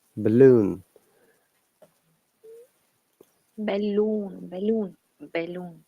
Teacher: In the second letter A, it has been replaced by that schwa sound. And because this sound is lazy sound, we don't pronounce it.